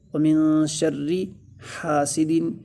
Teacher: ہا کو لمبا کریں گے اس لیے کہ الف مدہ ہو رہا ہے۔ سین میں سیٹی کی آواز آنی چاہیے اس لیے کہ سیٹی والے حروف میں سے ہے۔